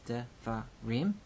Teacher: So devarim, 3-syllable word, devarim. You know that here the accent is on the rim, the final syllable. The accent that takes the syllable is called the tonic syllable.